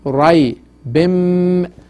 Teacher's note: Tum fi rai bim, after tanwin al kasra mim came, and mim is one of the huruf yarmalun, it is idgham mim sakin, and then we stretch it 3 second duration, 3 haraka